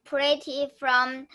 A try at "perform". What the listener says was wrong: They pretty form? The form is right. Form. This one is a P-E-R. So it makes a per sound. Perform.